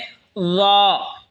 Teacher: ল জিহ্বার আগা সামনের ওপরের দুই দাঁতের আগার সঙ্গে লাগায় উচ্চারণ হবে ল